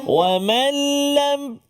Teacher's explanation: Wa mallam seolah-olah macam nun tu tak ada lam tu ada sabdu. Wa mallam terus masuk. · Masukkan bunyi nun ke dalam huruf lam tanpa dengung. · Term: idgham bila gunnah